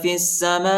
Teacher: فا کو سین کے ساتھ ملائیں گے، یا الف اور لام نہیں پڑھا جاتا، یا الف اور لام پر حرکت نہیں ہے۔